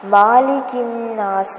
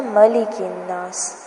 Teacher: میم کو لمبا نہیں کرنا، مالک الناس نہیں پڑھنا، ملک الناس